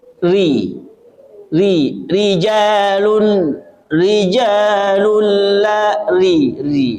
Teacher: bunyi rnya yang tipis yang kasrah